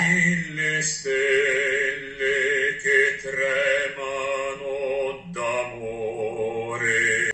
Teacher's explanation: La prima E è tonica ed è chiusa. L'ultima E è atona ed è comunque chiusa.